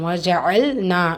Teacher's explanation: சிராஜாஜா வாவ் பத்ஹா ஜீம் பத்ஹா வஜா அ லாம் சுக்கூன் வஜல் நா நூன்ல அலிஃப் மதா இருக்கு இரண்டு ஹரக்கத் அளவு நீட்டம் கொடுத்து ஓதணும்